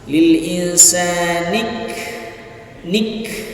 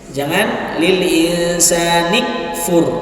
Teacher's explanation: Perhatikan huruf kaf di situ mahmusah. Huruf kaf apa? Ya, terhembus nafasnya, mengalir nafasnya.